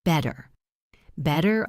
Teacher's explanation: Notice the r sound in better. In American English, that t sound often becomes a soft d sound.